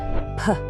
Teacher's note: You feel that little explosion of air? That's the consonant. That's the air being blocked and then released.